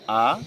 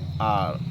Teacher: এটা ব্রিটিশরা উচ্চারণ করে আ, শেষের অটা উচ্চারণ করে না। আর আমেরিকানরা বলে আর, আমেরিকানরা র উচ্চারণ করে।